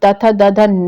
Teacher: क्योंकि न का उच्चारण जो हम लोग तथ दध न बोलते हैं, ठीक है, तो न का उच्चारण दांत और नासिका जो नोज है आपका, दोनों से हो सकेगा, केवल दंत से नहीं। तो केवल दांत से अगर न बोलना चाहेंगे तो नहीं होगा, तो इसमें नाक भी चाहिए और दांत भी चाहिए। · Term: अनुनासिक वर्ण